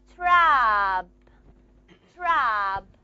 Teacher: you have aspiration in the sound t